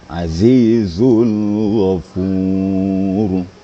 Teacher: ini Z jadi Zai ini ada kembarnya sedikit dengan dalal jadi Zai cara membacanya dirapatkan gigi dipertemukan dengan lidah harus ada penekanan suara